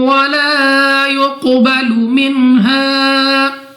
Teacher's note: قاف مستعلی میں سے ہے، موٹا پڑھیں گے منہ اور آواز کو کھول کر۔